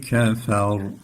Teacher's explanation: yine raı kalın okuduk kardeşlerim